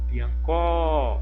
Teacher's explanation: em piancó, o có é a sílaba tônica